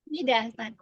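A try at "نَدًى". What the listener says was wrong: nada betul bukan nida nada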